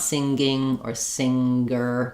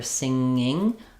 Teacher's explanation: I have to lift up to that NG sound and come back out without my tongue dropping rapidly to make the g sound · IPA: /ŋ/